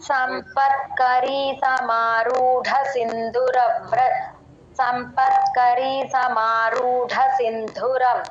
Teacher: సమారూఢ డ దగ్గర దీర్ఘం పెట్టకుండా చదవండి